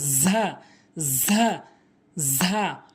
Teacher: দুটি দাঁত একসঙ্গে করে উভয় দাঁতের মাথাতে, উভয় দাঁতের আগাতে লাগিয়ে উচ্চারণ করতে হবে